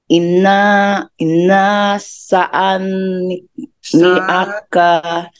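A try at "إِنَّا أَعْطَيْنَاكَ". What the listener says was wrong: Hindi po yung saa, kundi sa pahabain. Inna sa niaka.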